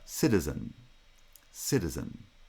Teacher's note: in the case of citizen the vowel is not final there's this the nasal comes after it so in citizen the vowel does reduce to schwa